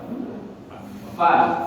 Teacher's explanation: Jadi keluarnya di perut bibir bawah bagian dalam, bertemu dengan gigi seri atas. Jangan berubah tempatnya.